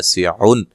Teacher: سعن نون تنوین کا اظہار ہے، غنہ نہیں کریں گے